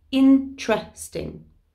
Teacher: we say it as if it was a t and an r together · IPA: /tʃr/